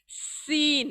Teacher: इसलिए मैं ये सीन की आवाज का मखरज याद रखना है। दोनों दांतों के मिलने से और जबान के करीब आने से, उनके करीब आने से ये आवाज अदा होती है